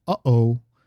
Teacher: So both at the start, uh-oh, there's this sound where your glottis stops and pushes air out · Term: glottal stop